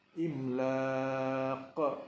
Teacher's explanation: Jadi samalah juga dengan kalimat ini, iaitu huruf madnya ialah alif, kemudian huruf qaf walaupun berbaris tetapi diwakafkan, dimati kerana wakaf. Jadi dibaca secara mad arid disukun, imlaq, dan disusuli dengan qalqalah kerana qaf itu huruf qalqalah dan ianya dalam situasi mati